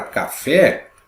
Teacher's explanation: sílaba tônica é a última sílaba forte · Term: oxítona